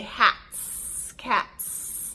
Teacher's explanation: we don't say it with our s sound we say it with our exploding T sound